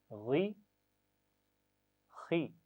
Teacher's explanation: ई, ही, गले के दरमियान से, ई, ही, और ऊपर की तरफ से गले के गी, خی، غی اور خوئی نہیں پڑھنا، بس تھوڑا سا موٹا رکھنا ہے آواز کو، بہت زیادہ موٹا کرنے کی ضرورت نہیں ہے، ہونٹوں کو گول کرنے کی ضرورت نہیں ہے